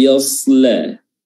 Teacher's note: huruf lamnya jangan sampai ikutan tebal